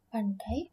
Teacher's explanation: itu adalah bunyi gabungan vokal yang dilafalkan dalam satu suku kata · Pandai ini dai-nya itu termuat dalam satu suku kata. Itulah yang disebut dengan diftong.